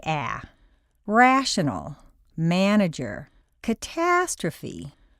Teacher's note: in a stressed syllable a sounds like aah rational manager catastrophe once you've internalized the basic rules of phonetics